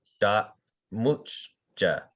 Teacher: glottal stop before the m